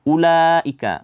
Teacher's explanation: Ulaika di sini ada mad wajib muttasil. Itu panjangnya sekitar 4 atau 5 harakat.